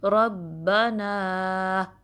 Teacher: नून ज़बर फिर बाद में अलिफ है, ज़बर का दूसरा टर्म मैं यूज़ करूँगी जो कि फ़तहा है, तो नून फ़तहा के बाद अलिफ मद्दा है तो उसको 2 काउंट स्ट्रेच करेंगे रब्बना। ठीक है, ध्यान रहे कि जो अलिफ मद्दा की साउंड है वो नाक में ज़्यादा ना जाए।